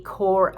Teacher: we do not pronounce the p and the s because in this case the french do not do it